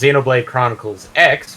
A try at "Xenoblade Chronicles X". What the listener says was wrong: Nope, the X is silent. So it's just Xenoblade Chronicle. It's Xenoblade Chronicle.